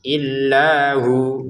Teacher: illahu ini kita baca hu panjang 2 harokat ya, karena wawunya kita baca sukun.